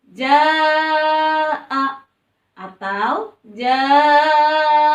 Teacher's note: Maka dibacanya harus dipanjangkan. Boleh 4 harkat, boleh 5 harkat. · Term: mad wajib muttasil